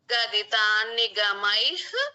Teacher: స్పష్టంగా వినిపించాలి. పరదేవతయా గదితాన్నిగమైః గదితాన్నిగమై మై తర్వాత విసర్గ ఉంది విసర్గ ఉంది క ముందు వచ్చిన విసర్గ కాబట్టి ఉహ రావాలి